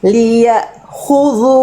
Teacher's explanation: Harus ee putus, harus syiddah, harus putus bunyi hamzah sukunnya.